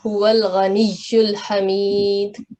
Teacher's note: And ya mushaddad, kindly pronounce it with more stress or emphasize on ya mushaddad